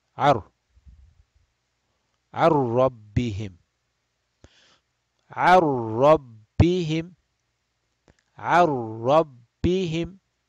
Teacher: we skip the noon sound altogether and we go and join with the ra